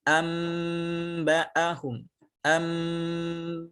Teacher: Yang keempat, cara membaca dengan iqlab, yakni dengan merubah bunyi nun atau tanwin menjadi mim, ya, menjadi mim. Ini dengan menempelkan kedua bibir saat nun sukun atau tanwin setelahnya ada huruf ba.